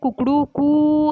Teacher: मुर्गा जैसे उच्चारण में कुकड़ू कू ऐसे बोलता है, तो लास्ट में ऊ की मात्रा दीर्घांत चलती है, उसे प्लुत स्वर कहते हैं